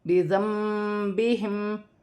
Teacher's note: بعد با آئے تو وہاں چھوٹی سی میم لکھی ہوتی ہے، نون ساکن کی آواز کو میم سے بدل کر غنّے کے ساتھ ادا کیا جائے گا · میم ساکن کے بعد فا آ رہا ہے تو میم ساکن میں غنّہ نہیں کیا جائے گا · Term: اقلاب